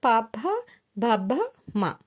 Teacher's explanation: ఓష్ట్యములు అంటే పెదవల నుండి పుట్టేవి